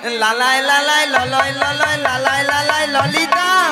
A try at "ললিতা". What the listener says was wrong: ওটা লালাই লালাইও নয় আর ললয় ললয়ও নয়, বলো ললিতা।